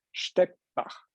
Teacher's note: the T gets swallowed by the B and actually becomes a P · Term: Angleichung